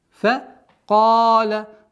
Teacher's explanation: Долгота в размере двух огласовок, естественно, удлинение фатхи.